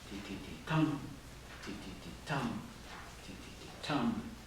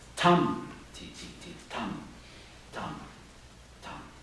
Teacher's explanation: the regularity of the first line, ti-ti-ti-tum, ti-ti-ti-tum, ti-ti-ti-tum, is disrupted by the second line's irregular rhythm